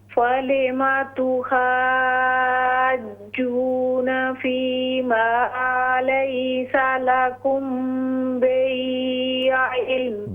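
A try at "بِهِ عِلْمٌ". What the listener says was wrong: बिही, हा को दुरुस्त करें। बिही इल्म,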